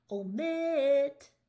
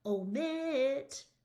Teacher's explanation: Do you hear how mit is louder and longer? That's the stressed side.